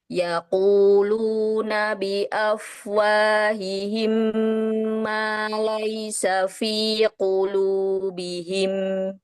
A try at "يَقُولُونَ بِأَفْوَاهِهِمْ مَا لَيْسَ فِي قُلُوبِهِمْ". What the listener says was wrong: Untuk bacaannya sudah sangat bagus ya. Untuk pengucapan huruf tak dengan kafnya, hamsnya pun dia sudah bagus ya.